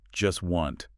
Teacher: the speaker doesn't pronounce the T sound in either word. Not in just and not in wanted. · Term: consonant reduction